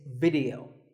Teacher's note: The important thing is that both the I and the E are pronounced as short I sounds